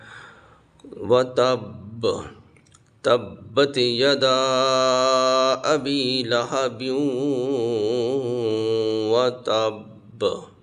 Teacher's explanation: یہ با حروف قلقلہ میں سے ہے، ہلا کے پڑھا جاتا ہے